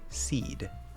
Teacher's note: you get to hold that voice through to the closing of that D sound